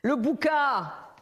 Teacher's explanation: dans le Sud, comme en Italie, les voyelles sont ouvertes.